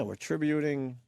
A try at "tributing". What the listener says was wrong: Tributing. There's no way to back out when you put the emphasis on the wrong syllable. We're tributing. No.